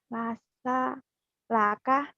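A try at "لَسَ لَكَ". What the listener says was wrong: Nggak boleh putus.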